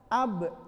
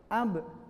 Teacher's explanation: Ab di lisan, makhrajnya di lisan. Sifatnya qalqalah, ab memantul